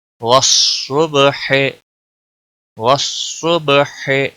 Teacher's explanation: با پر قلقلہ ہوگا، صاد موٹا پڑا جائے گا